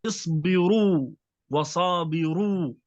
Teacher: الحال الثاني إذا كانت مضمومة، اصبروا وصابروا، الراء مضمومة فهنا تكون مفخمة